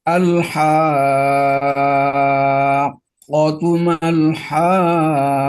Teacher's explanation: Kenapa kop yang sukun pertama ya sebelum kop yang kedua berharokat dia tidak dibaca dengan kol-kolah atau tidak dipantulkan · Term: idgham